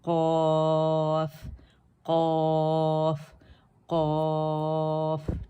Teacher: जब ज़बान की जड़ जो हल्क के अल हल्क, ठीक है, हल्क के फ़ौरन बाद वाला हिस्सा है, ये फ़ौरन बाद वाला हिस्सा है, ऊपर नरम तालु से लगेगी तो हर्फ क़ाफ़ अदा होता है · क़ाफ़ की आवाज़ मोटी होगी, औ की साउंड होगी